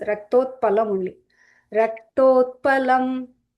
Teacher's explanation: Here रक्तो also many make the mistake of making this the Mahaprana sound, but this is Raktotpalam only.